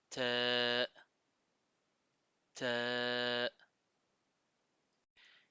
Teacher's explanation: c'est le bout de la langue qui s'appuie sur la racine des dents supérieures, des incisives supérieures, et elle touche aussi la gencive.